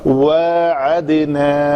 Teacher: دال پتلے حروف میں سے ہے, کلکلا پتلا ہوگا